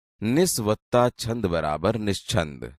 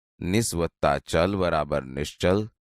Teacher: અહીં તમે જોશો કે નિસ શબ્દમાં છેલ્લે સ છે જે ચિંત શબ્દના ચી સાથે જોડાય છે. જ્યારે જ્યારે સ પછી ચ કે છ આવે તો સનું શ થાય છે.